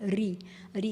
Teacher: ऋ का जो उच्चारण है वह मूर्धा से होता है। हमारे ऊपर का जो भाग होता है गड्ढे वाला भाग ऋ ऋ का उच्चारण उससे होता है।